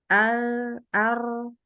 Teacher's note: Inhiraf itu jadi ada memungkinkan suara mengalir yang karena posisinya miring-miringin di lidahnya.